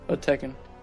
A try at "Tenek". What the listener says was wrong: Tenek. N first.